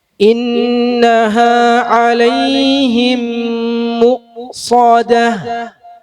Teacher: മീം ഉച്ചരിക്കുമ്പോൾ ചുണ്ട് കൂർപ്പിക്കും മു ദമ്മുള്ളതുകൊണ്ട്